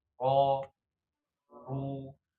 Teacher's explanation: ketika dia harokatnya fathah dan juga dhammah ya, ro ru dia tebal ya